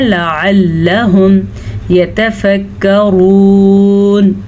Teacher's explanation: یہ واو مدہ ہے اور را کو ہم نے پر پڑھنا ہے کیونکہ را کے اوپر پیش ہے